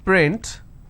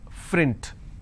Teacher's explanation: There are some people who cannot pronounce the per sound, they replace that with a fur sound